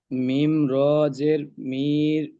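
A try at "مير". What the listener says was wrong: না না না না না, মিমটাকে টান দিয়ে রটাকে যোগ করেন। টান দিয়ে বানান করবেন, মিম র দুটো একসাথে বানান হবে। মির।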